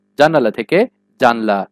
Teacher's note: এবারে সম্প্রকর্ষ বা স্বরলোপ। মনে রাখবে, দ্রুত উচ্চারণের ফলে স্বরের লোপকে সম্প্রকর্ষ বলে। যেমন জানালা থেকে জানলা।